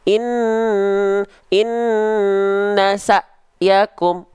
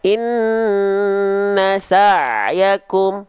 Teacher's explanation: Seharusnya kita lafalkan jadi ain. Jangan terputus suaranya.